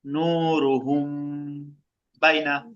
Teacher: মিম সাকিনের পরে বা আছে, মিম সাকিনটাকে গুণনা করব।